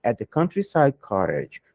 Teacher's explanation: no time jogando na voz para cima Tô começando uma frase lá no final da frase eu posso jogar a voz para baixo por exemplo é canto e sai corrente joguei a voz para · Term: entonação